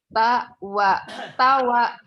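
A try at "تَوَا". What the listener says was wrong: Ini belajar artikulasi ya, bagus sekali ini.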